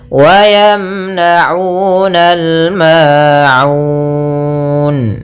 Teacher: Pada lafal aun ada bacaan mad arid lis sukun. Ini boleh kita panjangkan 2 harakat, boleh 4 harakat dan boleh pula 6 harakat